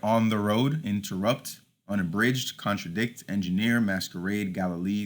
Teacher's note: anapestic pattern is 2 unstressed syllables followed by a stressed syllable